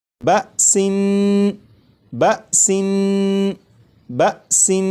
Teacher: یہاں پر دیکھیں یہ لفظ لکھا ہے بسن، اس لفظ کو اب میں پڑھوں گا 2 مرتبہ، اس کے بعد 4 مرتبہ آپ پڑھیے گا، اور پڑھتے ہوئے اس بات کا خیال رکھیے گا کہ سین کو جب میں پڑھوں گا تو سین کی جو تنوین ہے، جب تنوین کی ادائیگی کروں گا تو نون کو پڑھتے ہوئے زبان تالو سے لگا کر پڑھوں گا، اس کے بعد پھر آپ جب پڑھیں تو آپ بھی اسی طرح پڑھیے گا، جیسے بسن بسن بسن۔